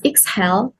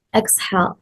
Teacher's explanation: The correct form is exhale, where the second syllable carries the stress